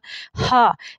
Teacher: ہا، یہ جو ہا ہے یہ حرف ہلکی حروف میں سے ہے اور حلق کے درمیان والے حصے سے ادا ہوگی